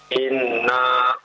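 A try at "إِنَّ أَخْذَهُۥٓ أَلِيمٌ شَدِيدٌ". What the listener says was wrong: Jangan dipanjangkan. Naknya jadi dipanjangkan, tapi gunnahnya yang ditahan 2 harokat. Jangan dipanjangkan ya. Inna akhdahu. Jangan dipanjangkan naknya. Jangan inna, jangan. Inna akhdahu.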